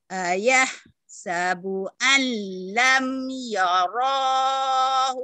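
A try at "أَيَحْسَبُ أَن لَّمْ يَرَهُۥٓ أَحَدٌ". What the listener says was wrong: Alam yarahu. Gitu ke situ tekannya. Ayah sabu alam yarahu ahad. Bunyinya pendek. Ayah sabu al. Bunyinya pendek.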